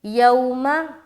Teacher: वाव साकिन से पहले ज़बर आ गया, तो यहाँ पर हम नरमी के साथ अदा करेंगे, और ये हो गया वाव लीन, यौमा।